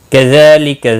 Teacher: ذال کے اوپر کھڑی زبر ہے, ایک الف کے برابر کھینچ کر پڑھیں گے